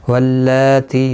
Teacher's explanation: لام کے اوپر کھڑی زبر ہے، ایک الف کی مقدار کے برابر کھینچ کر پڑھیں گے. یہاں پر بھی تی ہے اور یہاں پر بھی تی، دونوں کو ایک ایک الف کی مقدار کے برابر کھینچ کر پڑھیں گے.